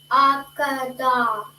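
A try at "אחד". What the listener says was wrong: Okay, but so now this syllable, we're not pronouncing the last syllable of the da. So don't say da. Okay, you're gonna say kad. Kad. A kad.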